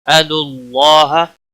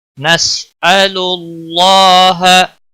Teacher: اللہ کے لام کے پچھلے حرف کے اوپر پیش ہے، اس لیے اللہ کا لام موٹا پڑھیں گے، اس کے اوپر کھڑی زبر ہے، ایک الف کے برابر کھینچ کر پڑھیں گے، ہا کو کھینچنا نہیں۔